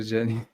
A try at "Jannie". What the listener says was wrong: It's Jannie. You pronounce it Jannie. It's the J.